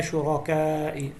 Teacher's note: وَيَوْمَ يُنَادِيهِمْ أَيْنَ شُرَكَائِي, را کو موٹا پڑھنا ہے اور شرکا کے اوپر مد ہے. اس مد کو 3 سے 5 الف کے برابر لمبا کرنا ہے